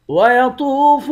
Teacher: طا کو موٹا پڑھیں گے، واو کے ساتھ ملا کر ایک الف کی مقدار کھینچیں گے